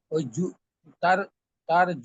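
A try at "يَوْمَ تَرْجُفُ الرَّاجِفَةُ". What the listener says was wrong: হ্যাঁ জুতে টান হয়ে যাচ্ছে, জি জি জি, এইটাতে টান দিব না।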